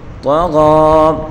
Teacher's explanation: طا کو پر پڑھیں گے اور غین کو بھی پر پڑھیں گے ، ایک الف کی مقدار کھینچ کر غین کو پڑھیں گے،